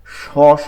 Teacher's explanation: জিহ্বার মধ্যখানটা তালুতে গিয়ে লাগে, বাতাস বের হয়, স স একটা বাতাসের যে আওয়াজটা হবে, জিহ্বাটা এই তালুতে লাগে কিন্তু ফাঁকা থেকে বাতাস বের হয়ে থাকে। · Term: শিন